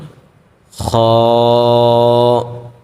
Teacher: যখন উচ্চারণ করব তখন আমরা একটু গড় গড় করে আওয়াজটা করব